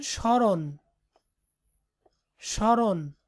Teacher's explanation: তবে প্রমিত উচ্চারণে ম ফলা যুক্ত বর্ণটি সামান্য নাসিক্য প্রভাবিত হয়ে ওঠে